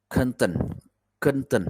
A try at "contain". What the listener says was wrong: Okay, it's not content. Contain. Con. That's con for the first syllable, and tain. It's like tay, and then a big N, a stress on the end. Tain. Contain.